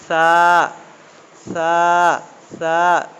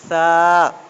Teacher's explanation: দাঁতের ডগা, জিভের ডগা, হ্যাঁ, হালকাভাবে ঠাঁকিয়ে সা সা সা, জিভের ডগা আর দাঁতের ডগা, সা, নরমাল আওয়াজে